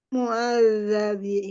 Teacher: Lidahnya keluar sedikit pada huruf zal.